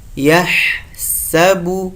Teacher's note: د سین په ویلو کې باید توجه وکړئ چې د سین هغه نرمه شپېلکه ادا سي